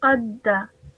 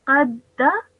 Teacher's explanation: you join the qaf to the dal because of the shadda, and then you produce the fatha sound.